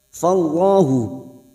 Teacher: Fallahu lam jalalah yang didahului fathah kita baca tafkhim.